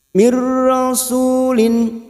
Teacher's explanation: idgham bila gunah hanya masuk tanpa mendengung